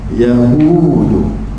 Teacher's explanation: Du sifat dia nipis, du sifat dia lembut, ujung lidah di belakang gigi atas.